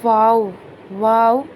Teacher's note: वाव को अदा करते वक्त दोनों होठों को गोल किया जाएगा